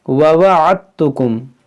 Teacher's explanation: جیسے واو زبر ہوا، عین دال تا زبر عت، یہاں پر دال نہیں پڑھیں گے، یہ دال اس تا کے اندر داخل ہو جائے گا، اس کو پڑھیں گے ووعدتکم۔